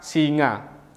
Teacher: lidah sebagai artikulator aktif dan velum langit-langit lunak sebagai artikulator pasifnya aliran udara dialihkan melalui rongga hidung ketika dorsum mendekati velum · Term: bunyi nasal